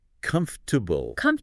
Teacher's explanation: It's almost like the or and the a just vanish. They get completely swallowed. It goes from 4 syllables down to 3, maybe even 2.5 sometimes. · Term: compress syllables